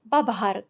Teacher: इसी प्रकार भू धातु है, तो भू धातु भभार जब बनता है, दोनों जब महाप्राण ध्वनियाँ आती हैं तो पूर्व की ये जो भ है ये तृतीय वर्ण अल्प प्राण में परिवर्तित होकर ब हो जाती है और शब्द बनता है बभार।